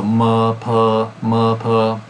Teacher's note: So the ending here, you have a nasal M, which is the same place of articulation as P, so ma, pa, ma, pa.